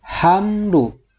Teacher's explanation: Nah, ini nama hukumnya adalah idhar syafawi. Jadi harus dibaca jelas huruf mimnya, tidak boleh dibaca dengung.